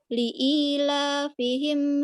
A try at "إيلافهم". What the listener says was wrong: لا يوجد لام مرة أخرى. إلى فهم bukan li.